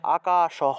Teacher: লাইনের শেষে একদম শেষে বিসর্গ আছে এজন্য পূর্ণ উচ্চারণ করতে হবে বিসর্গ এর যে হ টা আছে সেটাকে পূর্ণ উচ্চারণ করতে হবে সেজন্য এখানে আমরা হসন্ত ছাড়া উচ্চারণ করব আকাশহ আর এই ক্ষেত্রে